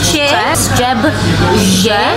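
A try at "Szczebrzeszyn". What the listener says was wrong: You didn't pronounce the R.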